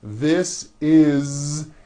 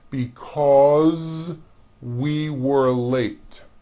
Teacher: the S is like a voiced Z